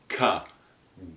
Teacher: So you have that stoppage for the K that finally gets released through the mouth, so it's orally released.